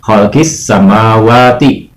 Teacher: Khalqis samawati itu alif lam samsiahnya tidak dibaca atau alif lamnya tidak dibaca.